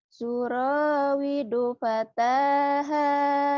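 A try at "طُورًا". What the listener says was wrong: Bukan suro, turo. Suro, turo. Bibirnya kurang ngebuka. Mungkin benar mau turo ya. Tapi kedengarannya kayak suro. Turo, ayo. Turo.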